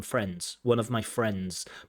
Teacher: a natural pronunciation of the word friends, we might see the D drop